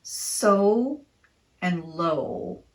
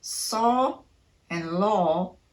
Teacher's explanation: the O makes a long o sound which in English is much more rounded and dark sounding than what the letter O sounds like in other languages say